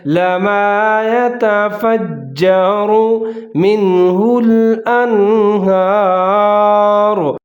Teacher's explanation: را کے اوپر پیش ہے، اس کو بھی موٹا کر کے پڑھنا ہے